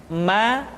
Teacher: diucapkan dengan cara merapatkan dua bibir